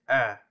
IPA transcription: œ